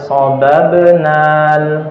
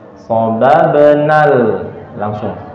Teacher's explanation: Alif itu akan gugur, tidak panjang ketika dia bertemu dengan sukun seperti ini.